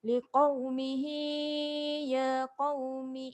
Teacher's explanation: Mihi ni ada ya kecil, baca panjang 2 harakat.